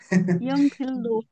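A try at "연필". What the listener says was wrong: तो इसको यौन बोलना है, येन नहीं बोलना है, येन गलत है प्रोनाउंसिएशन, ठीक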